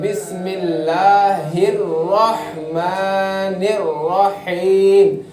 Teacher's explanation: دوسرے لوگ پڑھتے ہیں بسم اللہ الرحمن الرحیم کی طرح پڑھتے ہیں، اس میں جو ہے سو چھوٹی ہا بھی ایک ہی ہو گئی اور بڑی ہا بھی ایک ہی طرح ہمیں سنائی دے رہی ہے، تو بسم اللہ الرحمن الرحیم۔ اور الرحیم میں بھی بڑی ہا ہوتی ہے، الرحیم میں بھی بڑی ہا ہوتی ہے، اس کو اندر سے نکالنا پڑتا ہے